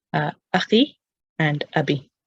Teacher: We don't add a waw. And again, the dhamma turns into a kasra for ease of pronunciation because it's followed by a ya